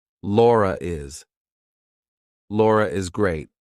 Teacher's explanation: We're probably going to put an intrusive R in there. · if I have to link my name to something else that's a vowel, I have to put an R in there.